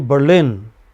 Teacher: So lin is heard for a long time. A bur is for a very short time, you know?